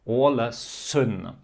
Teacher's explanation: the S is not a voiced S, so meaning without this vibration. Not Z, but S.